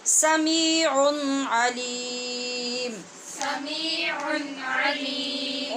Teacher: سمیع کی نون تنوین کے بعد عین حروف حلقی میں سے، یہاں اظہار حلقی